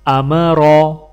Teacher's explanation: ان تینوں الفابیٹ کے اوپر زبر ہے تو تینوں میں سے کسی کو بھی نہ کھینچ کر اور نہ ہی جھٹکے سے پڑھا جائے گا